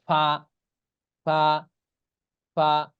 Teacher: মাখরাজ নিচের ঠোঁটের পেট সামনের উপরের দুই দাঁতের আগার সঙ্গে লাগাইয়া ঠোঁটের যে পেট আছে নিচেরটা এটা সামনের উপরের দুই দাঁতের আগার সঙ্গে লাগিয়ে উচ্চারণ